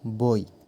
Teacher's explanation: বই উচ্চারণের সময় ব অক্ষরের ওপর বেশি জোর দেওয়া হচ্ছে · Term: শ্বাসাঘাত